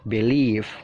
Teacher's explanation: Jadi penekanannya itu mengarah ke leave-nya ditekan ya. Jadi B-nya itu singkat aja. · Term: stressing atau penekanan